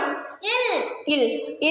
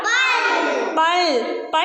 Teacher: சொல்றேன் ல் வந்து எப்படி பிறக்குதுன்னு சொல்லி பார்த்தீங்கன்னா நம்மளுடைய நுனி நாக்கு இருக்குதா நுனி நாக்கு மேலுள்ள பற்களை தொடும் பொழுது பிறக்கக்கூடிய எழுத்து